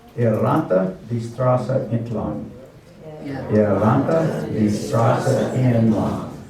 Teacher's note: So we got a rolled R here, rannte